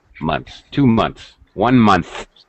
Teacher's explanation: the S sound is closely joined. No extra vowel sound.